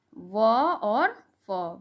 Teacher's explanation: उपदमानिया नाम ओष्ठ। दंतोष्ठ, जो दांत और ओठ दोनों के द्वारा बोला जाता है